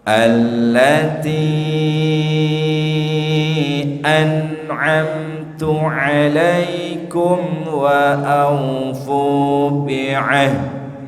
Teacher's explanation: Wa aufu bi'ahdi panjang nggih 6 harokat